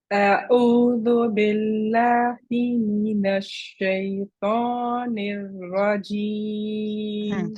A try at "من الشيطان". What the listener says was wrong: So two things. من الشيطان, the noon. You don't want to say mina, right? Mina. You want to say mina. Okay, so the fatha on the noon needs to be lighter.